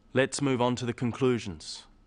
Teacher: you'll notice small pauses in the middle of sentences, after phrases.